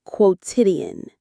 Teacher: The stress is on the second syllable, tid, quotidian.